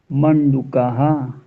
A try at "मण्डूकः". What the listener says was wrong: डू हरस पे दीर्घ है, डी हरस, डू हरस है, दीर्घ है, दीर्घ बोलिए।